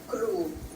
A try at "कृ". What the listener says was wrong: Kru. Kru. Crew would be with ukar or this. People do say, but the thing is, you can't say in a very pronounced way where we don't see the difference.